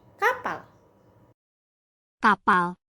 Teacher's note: P nah bunyi P ini merupakan bunyi hamba tak bersuara karena bunyi p yang dihasilkan ketika kedua bibir menutup rapat dan menahan udara di dalam mulut lalu dilepaskan secara tiba-tiba tanpa getaran pada pita suara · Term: bunyi hambat tak bersuara